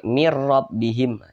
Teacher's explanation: sukun nah itu nun sukun berjumpa dengan huruf ro mirbihim Nah maka dia dibaca tidak berdengung Nah jadi dibaca pendek mirbihim jangan ditahan seperti ini mirabbihim jangan tapi dibaca pendek mirbihim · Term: idgham bila ghunah